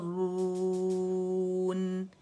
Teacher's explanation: मैंने नाक बंद की और नाक में गुन्ने की आवाज नहीं है